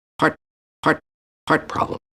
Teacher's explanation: Stop T at the end of heart.